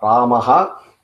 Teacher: that Ha sound is coming from the throat. Then you also have a different sound called Ha sound, H-A, Ha. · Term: visargam